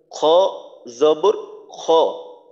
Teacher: খর মাখরাজ হলো তিন নাম্বার মাখরাজ হলকের শেষ থেকে · তারপর হা হা হলো 2 নম্বর মাখরাজ হলকের মধ্যখান থেকে আইন হা, তো এর উচ্চারণটা হবে হা জবর হা। তারপর খ খর মাখরাজ হলো 3 নম্বর মাখরাজ হলকের শেষ থেকে গইন খ, তো খর উচ্চারণটা হবে খ জবর খ।